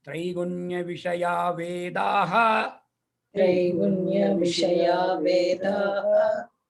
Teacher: you don't have to pronounce the Visarga. Visarga is not pronounced.